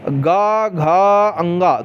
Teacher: गा घा अंगा थोड़ा अंदर गुंजन हो रहा, गा घा अंगा, ये है घोष।